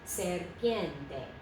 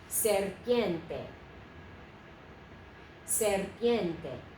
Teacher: when you have an R in front of a consonant of another syllable, we roll that if we can. So serpiente, three syllables.